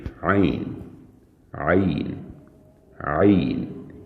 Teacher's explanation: عین کو حلق کے درمیان سے ادا کریں گے عین عین عین۔